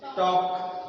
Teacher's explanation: In a talk, L is silent, means sound of L is not pronounced. Okay. आता हे ज्यांना माहित आहे तेच लोक काय म्हणतील टॉक म्हणतील, पण ज्यांना माहित नाही ते लोक काय म्हणतील टाल्क म्हणतील.